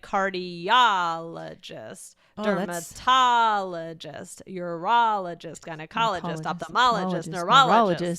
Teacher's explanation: it's the ah that gets the stress